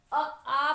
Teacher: आ, यहाँ पे आपके गले में कंपन हुआ, मीन्स आपका कंठ स्वर गले से निकल रहा है।